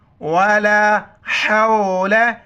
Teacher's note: हा को गले से करेंगे